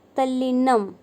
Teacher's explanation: त से परे ल होने पर त का ल में परिवर्तन हो जाना।